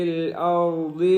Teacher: را بھی موٹا ہوگا اور ضاد بھی موٹا ہوگا